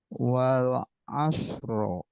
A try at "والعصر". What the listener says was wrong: Jangan di fathah tapi disukun. Asr. Coba langsung aja. Asr. Nah, wal asr. Nah, masih beda. Wal asr.